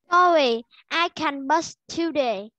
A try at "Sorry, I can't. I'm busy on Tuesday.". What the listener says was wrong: Sorry, I can't. I'm busy on Tuesday. À, ở đây con đọc bị nối âm lại nè.